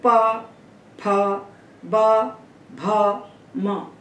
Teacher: दोनों ओठ अगर हम नहीं मिलाते हैं, पा तो नहीं निकलेगा पा। तो पा, फा, बा, भा, मा, ये दोनों ओठ पूरे पूरे सट रहे हैं, इनका पूरा उपयोग हो रहा है। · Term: स्पर्श